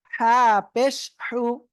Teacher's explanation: গলাটা চেপে মুখ দিয়ে হালকা বাতাস বের হবে, বের করে উচ্চারণ করতে হবে, বলেন সবাই, হা পেশ হু।